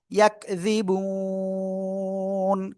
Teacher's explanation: থেমে পড়লে নুন সাকিন হয়ে যাচ্ছে এবং তার আগে এক আলিফ মাদ রয়েছে, আমরা এখানে কি এজন্য তিন আলিফ টেনে পড়বো।